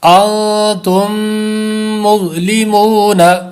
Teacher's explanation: ہیں، ان پہ بھی غنّہ ہے، اور دوسری جو میم ہے، میم ساکن کے بعد دوسری میم آ رہی ہے، تو اس میں بھی غنّہ ہے، میم مشدد بھی ہے